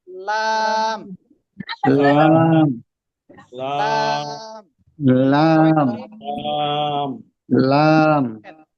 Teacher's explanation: জিহ্বার আগা উপরে দাঁতের মাড়ির সঙ্গে, দাঁতের সঙ্গে কিন্তু লাগাবো না, মাড়ির সঙ্গে